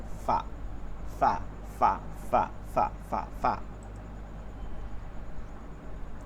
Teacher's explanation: নিচের ঠোঁটের পেট উপরের দুই দাত। নিচের ঠোঁটের পেট উপরের দুই দাঁতের আগার সঙ্গে লাগায়া